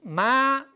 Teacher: low rise is ma that mean horse · When you say a lowering and rising tone, low rise, is ma, that means horse.